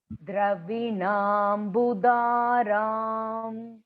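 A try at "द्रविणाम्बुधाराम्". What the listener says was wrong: Dravinam Budhar, dha, big dha, dharam.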